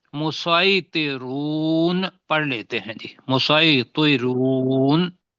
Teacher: سین اور سواد کے درمیان کی آواز نکالیں، اس لیے کہ سین کے اندر سیٹی بجتی ہے، سواد جو ہے وہ موٹا ہوتا ہے، تفخیم والا لفظ ہے